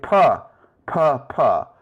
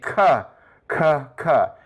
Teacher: as you say p, you'll feel a puff of air brush against your hand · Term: air stops